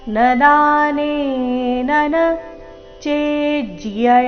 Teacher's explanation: ಚೆ ಮೇಲೆ ಆಘಾತ ಮುಂದೆ ಅರ್ಧ ಜ ಪೂರ್ತಿ ಯ ಸೇರಿ ಸಂಯುಕ್ತಕ್ಷರ ಬಂದಿದೆ